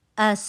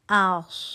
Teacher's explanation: اس پتلا حرف ہے, آپ کی زبان سیدھی ہے. آس موٹا حرف ہے, موٹی آواز سی ٹی کی آئے گی